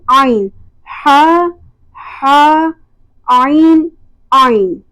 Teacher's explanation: آئین وسط حلق سے وہاں پر وائبریشن فیل ہوگی